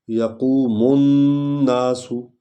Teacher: یقوم الناس، یقوم قاف جو ہے یہ حلق سے ادا ہوتی ہے. میم کو نون میں ہم نے داخل کرنا ہے کیونکہ نون پر شد ہے